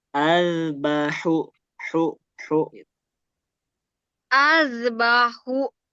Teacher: Jadi usahakan H ini dia berbeda dengan H dia lebih halus lebih tipis. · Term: H kecil